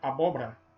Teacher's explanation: nós pronunciamos como se houvesse apenas três sílabas né abóbora engolimos esse segundo ó